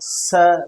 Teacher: और रगड़ के साथ गर्म वायु बाहर निकलती है। जैसे स बोल के देखो आप स रगड़ खा रही है ना जीवा थोड़ी वो अंदर। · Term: उष्म या संघर्षी व्यंजन